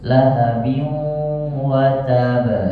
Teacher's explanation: Lahabiu, rasakan agak sedikit ada suara dengung